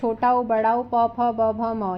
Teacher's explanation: हमारा छोटा उ बड़ा ऊ, प, फ, ब, भ, म य ओष्ठ से बोला जाता है